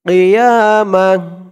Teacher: অক্ফ করার সময় গুলতা থাকলে সেই গুলতাটা হা হয়ে যায়